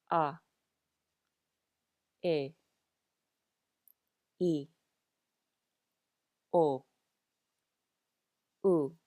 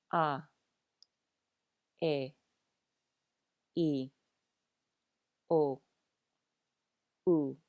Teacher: these are very pure sounds to the vowels with no diphthongs or gliding